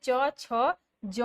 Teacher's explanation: उच्चारण के बाद वाला भाग संघर्षी हो जाता है वे स्पर्श संघर्षी कहलाते हैं। जैसे च, छ, ज, झर्श संघर्षी हैं।